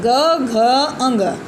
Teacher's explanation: इन ध्वनियों के उच्चारण में स्वर तंत्रियों में कंपन होने लगता है। ठीक है, कंपन का मतलब बोलने पर थरथराने लगता है। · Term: सघोष